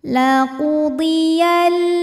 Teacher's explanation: alif lam qamariah sebab alif lam menghadapi huruf qamariah yaitu Hamzah maka lam sukun ini kita bunyikan dengan jelas atau disebut dengan izhar qamari